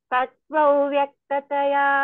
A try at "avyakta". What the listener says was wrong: Don't say vav. Tat vav vyakta. How you say av? How you say av? That same thing, tat vav.